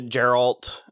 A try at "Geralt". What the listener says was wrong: it's a hard G. It's Geralt.